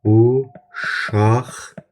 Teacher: Amma tələffüz uşaqdan kimi olacaq. Yəni samitlə başlanan şəkil artırdığımıza görə burada q samiti x-ya çevrilir.